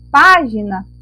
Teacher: Na palavra página, a nossa sílaba tônica é o pá. O pá é a sílaba mais forte.